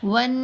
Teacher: واو کو نون سے ملاتے ہوئے غنہ کیا، یہاں بھی 2 حرکات کی مقدار ہم نے رکنا ہے. ون، پھر نون کے اوپر زبر، ساتھ الف، پھر نون کو 2 حرکات کی مقدار لمبا کریں گے.